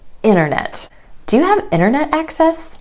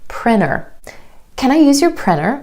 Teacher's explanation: that t just drops out with native speakers after the um sound or n Sound in an unstressed syllable the reason for this is because sound are both made at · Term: Vanishing tea, vanishing T